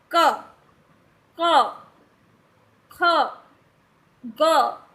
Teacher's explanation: वह हमारे कंठ से निकलते हैं यानी कि वह गले से निकलते हैं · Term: का वर्ग